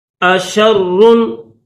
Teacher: شین کے بعد را کے اوپر تشدید ہے تو را کو دبا کر پڑھیں گے